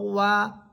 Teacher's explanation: ওয়াও হরফ ঠোঁট গোল করে, ঠোঁট গোল করার পর দুই ঠোঁটের মাঝখানে যে শূন্য জায়গা থাকবে ওই শূন্য জায়গা থেকে যে আওয়াজ বের হবে সেটাই হচ্ছে ওয়াও